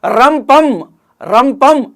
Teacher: నాలుక కొనబోయి దంతమూలాన్ని కొడుతుంది. కాబట్టి ఈ సాధురేపం అనేటువంటిది తడిత ప్రయత్నానికి ఉదాహరణగా మనం చెప్పుకోవచ్చు సాధురేపం అని అంటే మామూలుగా ర ఒకే పార్శ్విక ప్రయత్నానికి ఉదాహరణ లా అల.